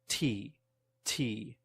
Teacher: T has much more air pressure T T that is released same mouth position but different amount